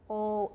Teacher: this is like an o but it's unrounded